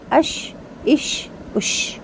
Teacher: शीन में तफशी यानी कि शोर का साउंड · سین میں باریک سی ٹی، اس، اس، اس۔ شین میں تفشی یعنی کہ شور کا ساؤنڈ، جیسے ہم کسی بچے کو یا کسی بھی بڑے کو خاموش کرانے کے لیے آواز نکالتے ہیں نا، ش، خاموش، بالکل اسی طرح اش، اش، اش۔